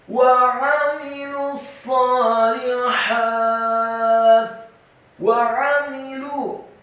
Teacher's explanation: wawunya dibaca fathah satu harokat, ainnya ditekankan fathah satu harokat, mimnya dibaca tipis, kasrah satu harokat